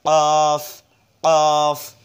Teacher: এরপর আসুন অফ, অফটা উচ্চারণ হবে জিহ্বার গোড়া তার বরাবর ওপরের তালুর সঙ্গে লাগাইয়া, জিহ্বার গোড়াটা ওপরের তালুর সঙ্গে লেগে অফ শব্দ হবে অফ, অফ, তাহলে ফা, অফ চার আলিফ অফ।